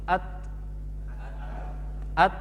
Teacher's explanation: Ada angin kecil setelah ta. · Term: ta sukun